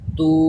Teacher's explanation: الٹا پیش واو مدہ کے قائم مقام ہے، اس کو بھی واو مدہ کی طرح ایک الف یعنی 2 حرکات کے برابر کھینچ کر پڑھتے ہیں